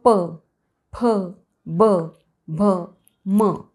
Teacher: तर निरोष्ठ ओष्ठ्य वर्ण आपल्याकडे असतात जे उच्चारण्यासाठी आपल्याला दोन्ही ओठांचा वापर करावा लागतो. उदाहरणार्थ प, फ, ब, भ, म हे या वर्णांचा उच्चार करताना दोन्ही ओठांचा आपण वापर करतो.